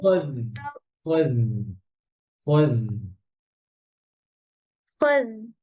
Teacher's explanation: হ্যাঁ আওয়াজ চলবে জিহ্বার আগে উপরে দাঁতের আগায় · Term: রখাওয়া